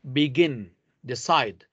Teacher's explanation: Other two-syllable words have the stress on the last syllable, like begin, decide